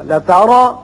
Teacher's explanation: را کے اوپر زبر ہے، پر پڑھیں گے.